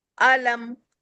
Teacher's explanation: मैं गुने की तरफ नहीं जा रही हूं। मैं सिर्फ मीम को मुकम्मल अदा कर रही हूं। तो मीम पर जब भी वफ करेंगे तो इसकी साउंड को मुकम्मल अदा करने के लिए वन फिंगर तक इसके साउंड पर हंठ मिलाएंगे। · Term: मीम साकिन